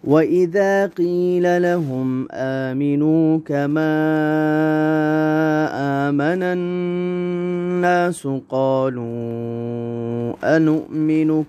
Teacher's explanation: مد جائز منفصل ہے، اس کو 3 یا 4 حرکات کی مقدار کھینچ کر پڑھنا ہے۔